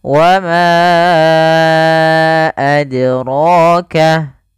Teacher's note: Kemudian pada lafal ro-nya ini panjangkan dua harakat karena di sini ada mad tabi'i. · Maka huruf dal ketika dia sukun, dia harus ada pantulannya. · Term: qalqalah